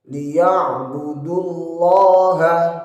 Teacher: lafadz Allahnya, lafadz jalalahnya dibaca tebal karena lafadz Allah didahului dhammah. Lafadz jalalah didahului dhammah atau fathah maka wajib dibaca tebal.